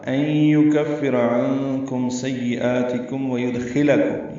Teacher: ان یکفر میں نون ساکن کے بعد یا آنے کی وجہ سے ادغام ہے, ادغام ناقص ہے, غنہ ہوگا. یکفر کاف باریک ہے, فا سے ملائیں گے, را پر پڑھیں گے.